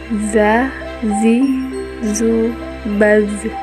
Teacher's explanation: Cara melafalkan huruf Za dengan menyentuhkannya ujung lidah dengan dinding dua gigi seri bagian atas. Suara mengalir dengan lembut tanpa diiringi dengan mengalirnya udara.